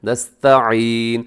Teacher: नस्तईन में ता है, ता बारीक पढ़ा जाता है, इसे नस्तईन नहीं करना, नस्ता गलत है, नस्तईन।